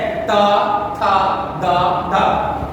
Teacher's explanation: जीवा दांत को ऊपर वाले दांत को स्पर्श करती है